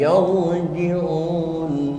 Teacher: Ra yang dimatikan dengan harkat fathah itu masuknya ra tabkhim, harus dibaca tebal